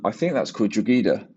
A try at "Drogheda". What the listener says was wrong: That is Drogheda. So it's a silent G. Drogheda. Drogheda, right?